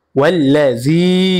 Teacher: জেরের পরে ইয়া সাকিন মাদের হরফ, আর মাদের হরফ হইলে এক আলিফ টানিয়া পড়িতে হয়, ইহাকে মাদ্দে তবাই বলে।